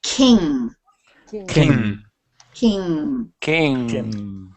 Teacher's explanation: don't put a g or a c sound on the end it's King